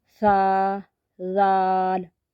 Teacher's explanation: सा जाल ये हरूफ लस्वी है ये मसूड़ों से अदा होते हैं हरूफ लस्वी सा जाल ज जुबान का सिरा ऊपर के दांतों